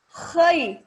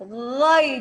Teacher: Huruf kho harus keluar nafas. Jadi ketika kho tidak keluar nafas, dia bukan kho. Misalnya nih, ya, khairukum, kita khai, keluar nafas.